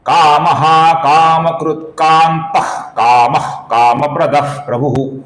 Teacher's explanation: काम प्रदाह के आगे प्रभु का प आया हुआ है, इसलिए विसर्ग की जगह पर हम हल्का सा फ ऐसा उच्चारण करेंगे।